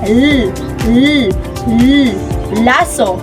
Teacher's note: ang ibabaw ng dulong dila ay lumalapit o dumidikit sa punong gilagid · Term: panggilagid